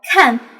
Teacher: to pronounce the Pinyin k you need to make that obstruction a little bit forward at the intersection of your soft palate and hard palate